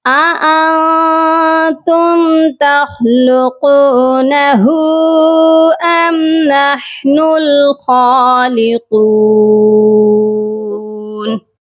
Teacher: نحن الحا کی آواز حلق سے آئے گی اور خالقون خا کو بھی موٹا پڑھیں گے اور قاف کو بھی موٹا کر کے پڑھا جائے گا